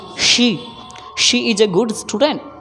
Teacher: S से दंत स होता, लेकिन SH से तो तालब श होता